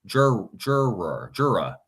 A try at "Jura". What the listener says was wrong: Yeah, jura. Yeah, instead of your juror.